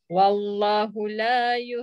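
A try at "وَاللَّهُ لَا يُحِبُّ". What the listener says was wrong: Kalimah Allah mesti panjang.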